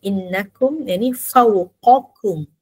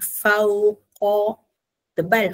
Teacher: Dia ada pertukaran antara huruf qaf dengan huruf kaf. Qaf huruf isti'la, jadi dia tebal. Tapi bila sebut kaf, dia nipis balik. Jadi dia ada senaman lidah kat situ lah.